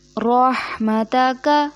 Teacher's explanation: کو ایک الف کے برابر کھینچیں گے، جیسے وَنَرْجُو رَحْمَتَكَ، رحمتک، را پہ زبر ہے، اس کو موٹا ادا کریں گے ہا حلق کے درمیان سے ، اور کاف جو ہے اس کو کھینچیں گے نہیں، جہاں